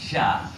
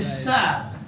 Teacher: Sebab shin, makhraj dia duduk di atas lidah.